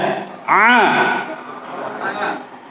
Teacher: huruf A itu keluar dari tengah tenggorokan, ya, A. Kalau nggak percaya boleh dipegang tenggorokannya. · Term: ain